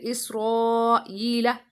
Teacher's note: حمزہ next اسی کلمے میں، مد متصل